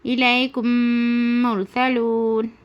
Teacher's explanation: میم ساکن کے بعد میم آ کر ہے، میم ساکن کے بعد میم آ کر ہے، اور اس میں بھی میم ساکن کے بعد میم آ کر ہے، تو میم ساکن کے بعد میم آئے تو غنہ کے ساتھ میم کو میم سے ملا کر غنہ کے ساتھ پڑھا جائے گا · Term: ادغام شفوی